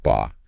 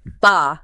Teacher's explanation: And it's the low falling tone.